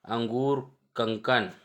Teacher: अनुस्वार है स्वर के बाद आने वाले व्यंजन जिसकी ध्वनि नाक से निकलती है वे अनुस्वार कहलाते हैं।